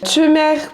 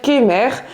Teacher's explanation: on va vraiment faire des tcheux, donc on va vraiment palataliser le K avec une voyelle ou le G, GW avec une voyelle